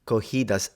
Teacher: I did not recognize the double R because she swapped it into an H